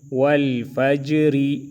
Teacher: لام زبر ول فا جیم زبر فج را زیر ری والفجری را کو باریک پڑھیں گے اور جیم میں قلقلہ کریں گے